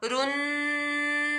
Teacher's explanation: सीन की सीटी निकालनी है